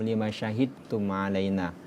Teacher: Ketika huruf da bertemu dengan ta, maka dihilangkan huruf qalqalanya. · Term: idgham mutajanisain